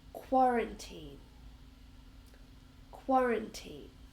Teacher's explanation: and we stress the first syllable quarantine